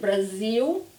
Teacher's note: so it's more like a W in the end